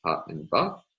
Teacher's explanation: So to see some explicit examples of sounds that have the major place feature plus labial, there are the normal bilabials, stops like pa and ba